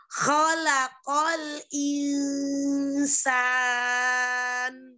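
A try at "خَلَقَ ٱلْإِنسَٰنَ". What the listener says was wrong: Khalaqnya jangan khalaq biasa. Khalaqal jangan. Khalaq jangan diseret matanya. Khalaqal. Khalaqal insan.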